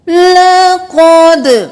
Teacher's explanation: लक़द क़ाफ मोटा, दाल क़लक़ला, लक़द नहीं करना। लक़द दाल को कलकला ऐसे करें कि आवाज पलट कर वापस आए। दाल साकिन ना करें, लक़द ना करें।